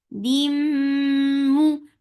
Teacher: This is idgham with gunna, so keep the sound in your nose for a longer time. Dim. For the circle ellipse, the sound is short.